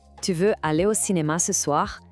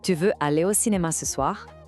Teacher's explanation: A chave aqui não é só a pronúncia, mas a entonação. Em francês, perguntas informais como essa têm uma melodia que sobe no final.